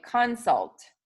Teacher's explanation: So in the word consult, many people would say that word like consult, meaning the first syllable is accented